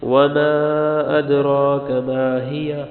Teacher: حمزہ دال زبر اد کلکلا ہوگا، را موٹی ہوگی